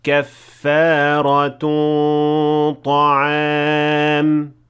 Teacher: The غنة here is full mouth because the letter that comes after it is ta, which is a full mouth letter. So in order to merge them properly, you have to make the غنة also in full mouth.